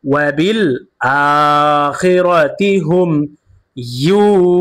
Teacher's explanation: মাদের হরফের বামে হরফে অক্ফ হইলে 3 আলিফ টানিয়া পড়তে হয়, ইহাকে মাদ্দে আরজি বলে।